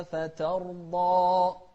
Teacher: الضاد هني خلت الألف بعدها مفخمة